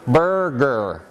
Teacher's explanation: So, if you pay attention to how you make the g, what you're doing is you're saying burr, and then the back of your tongue makes that stop at the velum that is ga.